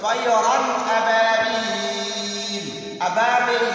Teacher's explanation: तो तयरन के बाद रा पर दो ज़बर तनवीन के बाद अबाबील के शुरू में जो हमजा आया है तो इसकी वजह से तयरन पर गुन्ना नहीं होगा, तो हम इसमें इजहार करेंगे, गुन्ना नहीं करेंगे · इस बा को थोड़ा लंबा करना